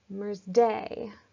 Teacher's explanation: That first syllable is unstressed, ending with a stressed syllable.